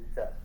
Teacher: Tapi orang Arab akan sebut da, dia di hujung lidah, da, okay? Dan dekat dengan gigi depan tu, da, okay? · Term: dal Arab